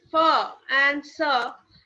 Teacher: Ha is pronounced in the throat, whereas fa and sa is pronounced by forcing air through a narrow channel between the upper teeth and the tongue